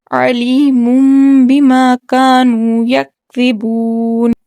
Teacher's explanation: نون تنوین کو میم سے بدل کر پڑھا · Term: اقلاب